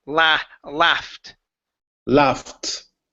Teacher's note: instead of loft with an ah, it's a short a sound.